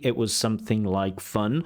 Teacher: Notice the dropping of the T.